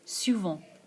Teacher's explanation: we have this nasal vowel sound with the T being silent